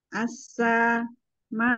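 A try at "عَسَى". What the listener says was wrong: Jangan dipanjangin. Asa. Arba au khams itu mat munfasil muttasil ya arba au khams harakat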